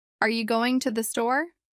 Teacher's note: Rising intonation at the end showing it's a question